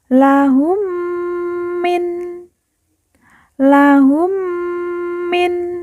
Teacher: bertemu dengan huruf mim yang bertasdid maka cara bacanya ditekan ditahan didengungkan dua harakat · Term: didengungkan 2 harokat